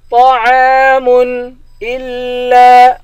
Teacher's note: حمزے کو لام کے ساتھ ملا کر لام کو سختی کے ساتھ پڑھیں گے، لام کے بعد الف ہے، الف حروف مدہ ہے، اس کو ایک الف کے مقدار کھینچ کر پڑھیں گے. · طا کو موٹا پڑھیں گے، طا موٹے حروف میں سے ہے، عین کے بعد الف ہے، الف حروف مدہ ہے، اس کو ایک الف کے مقدار کھینچ کر پڑھیں گے، میم پر غنہ نہیں کریں گے.